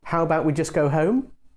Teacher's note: you can also make a suggestion with a rising tone